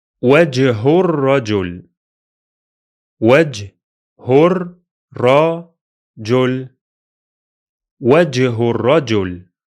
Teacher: the jump happens from the final letter in the first word directly to the doubled ra in the second word. So it will be pronounced as if the two words are written like one. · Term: junction sound